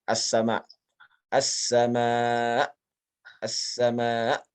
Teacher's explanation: Dan huruf paling kasar di dalam 29 huruf hijaiyah adalah huruf hamzah. Huruf hamzah ini termasuk huruf yang syiddah, yang kuat sekali, yang sangat kasar, sehingga jika ia dimatikan atau disukunkan pada akhir ayat, ya, dia bunyinya sangat kasar.